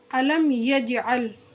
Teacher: یج پر قلقلہ ہوگا کیونکہ قلقلہ کے حرف میں سے جیم ساکین ہے، اس لیے اس پر قلقلہ کر کے پڑھیں گے۔